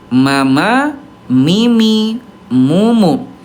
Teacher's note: mim tengah-tengahnya antara kuat dan lemah ya, sedikit mengalir